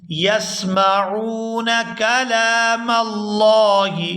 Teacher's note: فریق منہم یسمعون کلام اللہ، یسمعون کلام اللہ، یہاں لام پر کھڑی زبر ہے تو اس کو کھینچ کر ادا کیا جائے گا اور آگے میم کو لفظ اللہ کے لام کے ساتھ ملائیں گے تو لفظ اللہ کے لام کو پورا ادا کریں گے کیونکہ لفظ اللہ کے لام سے پہلے زبر ہے